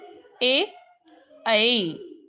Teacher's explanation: कंठ पण आहे टाळू पण आहे ए ऐ म्हणून हा झाला ए आणि ऐ कंठ तालव्य त्यानंतर